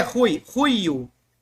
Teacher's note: é uma aspiração. Ele equivale a um R bem fraquinho. Ou um H quando a palavra house.